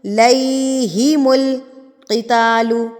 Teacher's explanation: یا سے پہلے زبر ہے، زیر نہیں ہے. زیر ہوتی تو ہم لمبا کرتے، زبر ہے تو لین ہے تو لمبا نہیں کرنا ہے، اس کو ای کی طرح پڑھنا ہے.